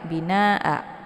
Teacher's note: Ini dibaca panjang boleh 4 atau 5 harokat, harus konsisten dengan nafas. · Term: mad wajib muttasil